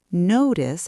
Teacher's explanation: Notice how go off links together smoothly.